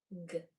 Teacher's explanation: The back of the tongue is kicking off against the back of the throat. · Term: hard sound for G